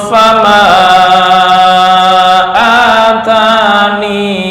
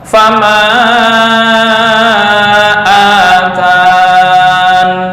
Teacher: Boleh isbat ya, membaca fama atani. Yang kedua membuang ya, fama atan. Tapi ketika menyambung ya-nya tetap terbaca.